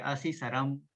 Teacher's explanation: અહીંયા સ જે છે એ પેલો તાલવ્ય થઈ જશે અને ર અડધો થઈ જશે. આપણી પાસે દંત્ય સ છે અને આ જે છે એ તાલવ્ય છે અને ર પછી અહીંયા હલન થઈ જશે પાછો શ્રમમાં, એટલે અશિશ્રમ.